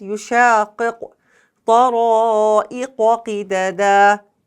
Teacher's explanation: When we touch the root of the tongue on the soft palate, then we make Qaf letter sound.